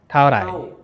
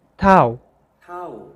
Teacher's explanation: Tao is a high tone and then slightly drops.